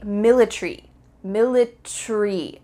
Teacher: In American English, you're going to pronounce each of the final letters, A-R-Y, military. In British English, they often cut out the A. So instead of military, it would be military, military.